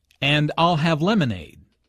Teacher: Notice how stresses I'll and lemonade to emphasize her choice